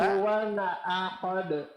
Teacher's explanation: Pada tanwin di sini hukumnya izhar berarti bunyi nun sukunnya mesti jelas.